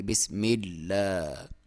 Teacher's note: نیچے زیر ہے تو اس کو باریک پڑھیں گے۔ بسم اللہ، لام کے اوپر شد ہے تو یہاں پہ تھوڑا سا ٹھہر کے وقف کریں گے، تھوڑا سا رکیں گے اور دبا کے پڑھیں گے · لام کے اوپر کھڑی زبر ہے اور کھڑی زبر کی لمبائی تقریباً 1 الف کے برابر ہوتی ہے ، الف مدہ کے برابر آپ اسے لمبا کرتے ہیں، یا · اس کو باریک پڑھیں گے، کیونکہ اس سے پہلے لفظ پہ میم کے نیچے زیر ہے تو اس کو باریک پڑھیں گے۔ بسم اللہ، لام کے اوپر